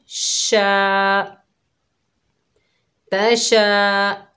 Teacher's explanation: शीन के ऊपर ज़बर है, आगे अलिफ खाली है, ये अलिफ मद्दा है, एक अलिफ की मिकदार खींचकर पढ़ेंगे। शीन की आवाज़ फैलती हुई महसूस होती है